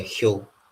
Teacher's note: And then we have a palatal ha sound